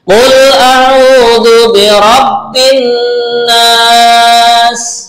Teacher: bin mendengung karena nunnya bertasydid ya